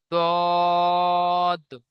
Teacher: সাত থেকে 10 সাত নম্বর মাখরাজ জীবের কিনারা এবং তার বরাবর উপরের মাড়ির দাঁতের গোড়ার সাথে লাগিয়ে জীবের কিনারা এবং তার বরাবর উপরের মাড়ির দাঁতের গোড়ার সাথে লাগিয়ে উচ্চারিত হয়